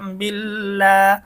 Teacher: পেশ কলা আউ বালাম জের বিল লাম খারা জবর লাম বিললা আল্লাহ শব্দের লাম এখানে চিকন কারণ আল্লাহ শব্দের ডানদিকে জের আসছে